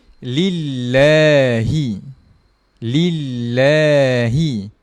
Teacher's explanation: Pada kalimah Allah sahaja kita baca panjang walaupun tidak ada huruf mad, tidak ada alif. · Kita baca dengan panjang. La tu kita baca dengan panjang. 2 harakat. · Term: dua harakat